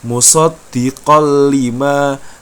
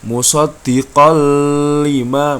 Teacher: Fathah tain bertemu dengan huruf lam. Maka fathah tainnya dilebur, langsung masuk ke huruf lam. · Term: idgham bila gunnah